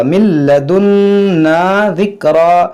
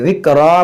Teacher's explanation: یہاں وقف کریں گے تو دو زبر کو ہم الف سے بدلیں گے، ذِکْرًا پڑھیں گے.